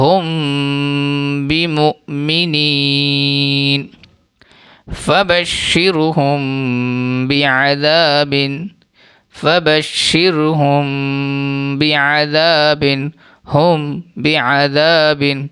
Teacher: میم ساکن کے بعد اگر با آئے تو غنہ بھی کریں گے اور غنہ کے ساتھ ساتھ اخفا بھی کریں گے۔ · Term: اخفاء شفوی